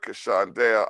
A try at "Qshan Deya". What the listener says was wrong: Just stress the Q more. Qshan.